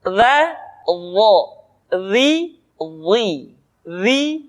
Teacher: Selanjutnya, pengucapan huruf dha. Diucapkan dengan menyentuhkan ujung lidah dengan dua gigi seri bagian atas sebagaimana kita mengucapkan huruf dha.